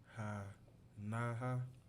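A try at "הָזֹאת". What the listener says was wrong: No, remember what we said that was? That's a Z, right?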